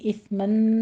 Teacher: سا پر ہمس ہوگا، سیٹی کی آواز نہیں آنی چاہیے